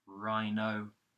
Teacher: Then the word no, pretty much, which is made up of the N consonant using the tip of the tongue, and then the O vowel found in words like so and go